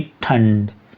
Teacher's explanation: तो जो बिंदी लगी रहती है इसे में अनुस्वर में जो हम बोलते हैं, जैसे हम बोलेंगे ठंड, तो इसमें नाक से हवा निकलती है